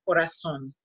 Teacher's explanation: If you hear somebody from Spain, you're gonna hear corazón, but somebody from the rest of the Spanish-speaking countries, they are gonna pronounce an S, corazón.